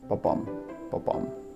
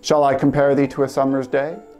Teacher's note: A line of poetry written this way is composed of five iambs, groups of two syllables that fall into an unstressed, stressed pattern, famously like a heartbeat, ba-bum, ba-bum.